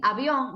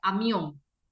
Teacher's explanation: labios se aprietan y no se deja salir Sonido son bilabiales los dos son bilabiales pero la B es vibrante tienes que dejar un poquito de aire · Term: el sonido de la B